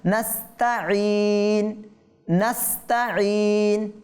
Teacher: ঈন থেকে ইন বললে আইন থেকে হামজাতে পরিবর্তন হয়ে গিয়েছে, তার মানে এটাকে নাস্তাঈন বলা যাবে না।